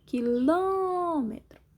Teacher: Sílaba mais forte é o Ló, som fechado, acento circunflexo.